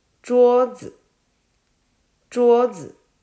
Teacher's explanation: ，我们写一下，桌，下面是一个木，因为古代的桌子是用木头做的。桌子，桌子就是▁table，▁拼音是▁z▁u▁o▁桌子。子是轻音，所以这个一上面是保持原状，没有任何的声调。桌子，桌子， 这个子就是发声比较轻，所以叫做轻音。